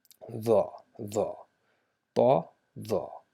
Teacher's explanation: We just touch the tip of the tongue with the tip of the top front incisors. But now instead of making it thal by open mouth, we just make our mouth shaped a little bit round, right? So rounded mouth, the, just like the, we do it the.